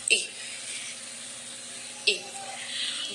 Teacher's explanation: the front part of the tongue rises towards the hard palate between the half open and half closed position. The tip tongue in the contact with the lower tip.